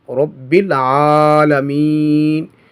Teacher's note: یا مدہ ہے، اس کے بعد سکون عارضی ہے، تو یہاں پر مد عارض ہوگا